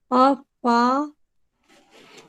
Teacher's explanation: पा में अ, दोनों होंठ जुड़ते हैं, पा हम्म में दोनों होंठ जुड़ते हैं।